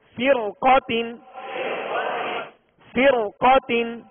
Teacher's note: را ساکن سے پہلے زیر اسی کلمہ میں اور اس کے بعد حروف مستعلیہ میں سے قاف ہے لہذا اس را کو پر پڑھیں گے